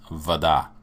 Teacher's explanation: The accent is on the last syllable.